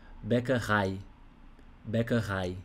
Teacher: a sílaba tônica, a ênfase, você vai dar no final.